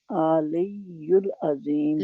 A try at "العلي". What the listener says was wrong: لئی کیوں ہے؟ لام کے اوپر زبر نہیں ہے، لام کے نیچے زیر ہے.